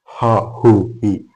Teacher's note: ഈ ഹാന്റെ ഉച്ചാരണ സ്ഥാനം എന്ന് പറയുന്നത് തൊണ്ടയുടെ അങ്ങേ തലക്ക്, അതായത് നമ്മളെ നെഞ്ച് കഴിഞ്ഞ് തൊണ്ട തുടങ്ങിയ ആ ഗ്യാപ്പ് മുതലാണ്, അല്ലെങ്കിൽ അവിടെ നിന്നാണ് ഹ പുറപ്പെടുന്നത്. അതായത് നമ്മളെ ശ്വാസകോശത്തിൽ നിന്നുള്ള കാറ്റ് ഒരു തടസ്സമില്ലാതെ പുറത്തോട്ടേക്ക് പുറന്തള്ളുമ്പോൾ ഉണ്ടാകുന്ന അക്ഷരമാണ് ഹ. നമ്മൾ ശരിക്കും പറഞ്ഞു നോക്കിയാൽ അത് ഇവിടെ നിന്ന്, ഇങ്ങനെ നെഞ്ചിൽ നിന്ന് തന്നെ ശ്വാസകോശത്തിൽ നിന്ന് പുറപ്പെടുന്നതായിട്ട് കാണാം.